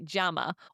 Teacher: the double L sound we now know sounds like a J.